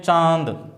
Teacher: तो कुछ जो है हवा नासिका से होकर निकल रही है और कुछ मुंह से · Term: अनुनासिक स्वर